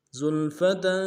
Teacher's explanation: فلما رأوه زلفة سیئت وجوه الذین کفروا سیئت وجوه الذین کفروا زلفة سیئت وجوه الذین کفروا زلفة، زا کو سیٹی والا حرف سیٹی ہوگی، لام کے سامنے ڈالنا ہے، لام ساکن غنہ نہیں ہوگا، فا کو نرم سے ادا کریں گے تاکہ اوپر تنوین ہے، غنہ کریں گے